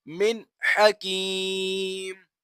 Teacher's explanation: یہاں پر بھی نون ساکن ہے، نون ساکن کے بعد حا آ رہا ہے، حا جو ہے وہ حروف حلقی میں سے ہے، تو لہٰذا یہاں پر بھی ہم غنہ نہیں کریں گے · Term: اظہار